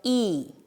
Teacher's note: 혀가 앞에 있고 입 안에서 앞쪽에 위치해서 소리가 납니다. 그리고 가장 높은 곳에서 소리가 납니다.